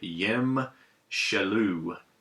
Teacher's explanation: you can hear on the shaloo that little bit of a indistinct vowel sound after the shin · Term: schwa